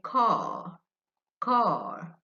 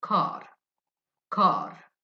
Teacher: The British people, they say car, car. They don't pronounce the R sound, which is r, r. The Americans say car, car. They pronounce the r sound.